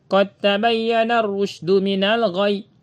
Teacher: Jadi dalnya nggak dibaca lagi, tapi diidghamkan. Masuk langsung kepada huruf ta.